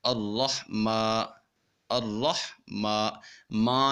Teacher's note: جب ہم نے میم کے اوپر کھڑا زبر کو ادا کرنا ہے تو آواز ناک میں نہیں جانی چاہیے